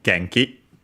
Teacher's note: Genki is accented on the first syllable